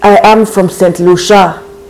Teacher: the stress is all flowing towards that last syllable in such a French way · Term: French intonation